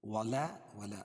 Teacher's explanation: ادغام مع الغنہ کے 4 حرفوں میں سے واو آ رہی ہے، اس کو غنہ کر کے پڑھیں گے. ولا، ولا الف سے پہلے زبر ہے، ولا شرا، راپور ہوگی اور الف مدہ بھی ہے، ایک الف کے برابر کھینچ کے پڑھیں گے.